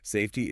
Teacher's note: Notice how the T in safety is crisp. It's not swallowed.